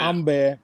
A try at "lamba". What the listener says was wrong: A at the end is A. The other thing is that we have a long vowel.